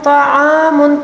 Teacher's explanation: عین کو حلق کے درمیانی حصے سے ادا کریں گے